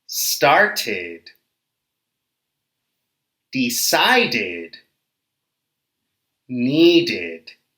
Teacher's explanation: when the final sound not letter is a t or a d sound then in the past simple we say id · in words like started decided and needed repeat after me so you can hear the id sound at the end of these words